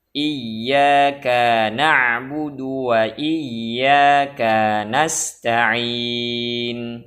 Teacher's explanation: Kesalahan yang keenam yang wajib kita jaga ketika membaca iyyaka na'budu wa iyyaka nasta'in, yaitu memanjangkan harokat pada huruf kaf, harokat fathah pada huruf kaf. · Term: isba'ul kaf